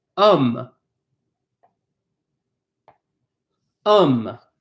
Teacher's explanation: We do not pronounce the H.